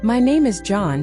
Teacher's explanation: Confident English goes down at the end of statements. My name is John should end with falling intonation, not rising. Rising inonation makes statements sound like questions, which makes you sound uncertain.